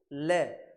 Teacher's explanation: तो ल का जब आप उच्चारण करो करोगे ले बोलोगे ले तो आपकी जो साइड के दोनों साइड वाले सिरे हैं उसके साइड से हवा निकल के आती है · जो पार्श्व भागों से हवा निकलती है, इसलिए इसको कहते हैं पार्श्व व्यंजन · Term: पार्स व्यंजन